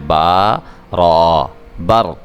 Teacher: حا را، حر، با را کو پر کر کے پڑھنا ہے، با کو اپنے دونوں ہونٹ ملا کے تو پھر آپ نے ادا کرنا ہے